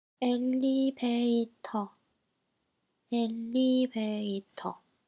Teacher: The first L is doubled because it's stressed, and V is replaced with B, and the last R is dropped because it's unstressed and final position.